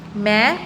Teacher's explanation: मैं में सिर्फ देखो नाक से आवाज आई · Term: अनुस्वार